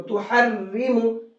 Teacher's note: اس را کے نیچے زیر ہے تو را کو باریک کر کے پڑھیں گے، موٹا کر کے نہیں پڑھیں گے